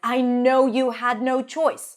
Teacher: Almost every word is stressed here because it's such a powerful sentence